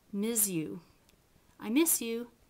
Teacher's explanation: you actually do palatalize the fricative and it becomes more of a shh instead of a s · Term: palatalize fricatives